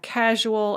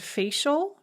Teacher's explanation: je is the voiced version of the sound and she is the voiceless version of the sound